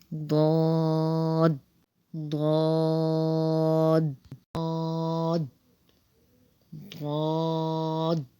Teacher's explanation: یہ حرف حافیہ ہے، حافظ لسان سے ادا ہونے والا حرف ہے، یعنی کہ زبان کا بغلی کنارہ یعنی زبان کی جو کروٹ ہے یہ اوپر کی جو داڑیں ہیں ان کی جڑوں سے جا کے ٹچ ہوگا۔ اوپر کی داڑوں سے جب ٹچ ہوگا تو اس کی آواز آئے گی ضاد ضاد۔